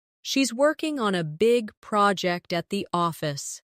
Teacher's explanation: She's working on a big project at the office. Stress, working, big, project, and office. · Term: rhythm